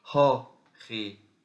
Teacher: esse aqui é o E fechado, a aspiração, o O aberto com uma aspiração. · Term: aspiração forte